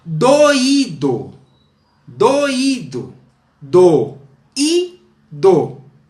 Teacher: Esse I é um hiato, é tônico, está formando uma sílaba sozinha, portanto, acentuado.